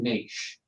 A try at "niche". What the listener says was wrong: There's no T in it. No. No. Niche.